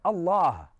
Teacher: the alif comes from the throat, the lam is now elongated from the fullness of your mouth, and the ha is aspirated as a breath comes from you. So in every utterance of Allah, you can breathe.